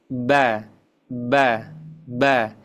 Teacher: Ketika membaca huruf ba itu makhrajnya harus kita tekan dengan kuat yaitu dua bibir.